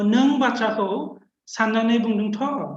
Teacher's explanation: So in this case, of course, we need also a rising intonation, without which this is not going to be a tag question. So both rising intonation and combination of Tha gives us a sense of tag question here · so you will rise your pitch, and that way you're suggesting it's a question and it's a tag question. Okay, so this Tha then somehow gets associated with this tag question.